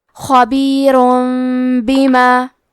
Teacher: کلمت بیما با حروف القلب میں سے ہے، قلب کا معنی ہے بدل دینا، تو ہم تنوین کو ہلکی میم میں بدل کے اور غنہ کے ساتھ یہ حکم کو ادا کریں گے